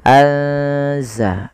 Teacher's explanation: memasukkan nunnya atau menyamarkan nunnya kepada huruf zai ya. Anza langsung kepada makhraj daripada huruf z. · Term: ikhfa